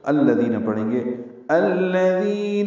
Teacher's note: ذی یا مدہ ہے، 2 حرکات لمبا کریں گے